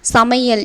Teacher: ஐகாரம் சொல்லின் இடையிலும் இறுதியிலும் வரும்போது ஒரு மாத்திரை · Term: ஐகார குருகம்